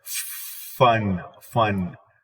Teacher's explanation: the vocal folds are not going to be active so a firm is voiceless so when you go activate the